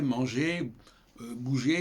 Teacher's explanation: Tout comme par exemple les infinitifs en français, manger, bouger, il y a ER, le R ne se prononce pas.